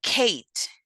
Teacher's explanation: The phoneme K is voiceless, velar stop, such as in Kate.